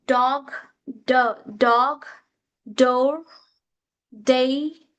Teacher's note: D which comes under alveolar sound.